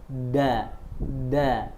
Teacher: Ujung lidah ada di gigi seri atas bagian dalam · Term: huruf dal